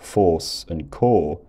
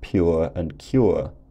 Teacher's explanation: words like force and core had a separate vowel to words like pure and cure